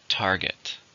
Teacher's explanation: How many syllables are in the word target? 2. Stress is on the first.